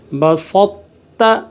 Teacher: یعنی تو کا تا میں ادغام ہوا ہے، تو کی موٹائی کو برقرار رکھنا ہے، ٹھیک ہے، لیکن پڑھنا پھر بھی تا ہے۔ تو میں قلقلہ اور سکتہ نہ ہونے دیں، مطلب قلقلہ یا سکتہ یہاں کوئی ہماری آواز رکے نہیں، سانس کوئی ٹوٹے نہیں، کوئی اس طرح کا معاملہ نہ ہو۔